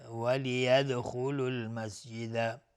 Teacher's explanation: دال اینجا قلقله میخواد چون ساکنه